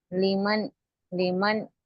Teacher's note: نون کی آواز کو ظاہر کرنا، یعنی کہ اچھے سے اس کو پورا پروناؤنس کرنا. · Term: اظہار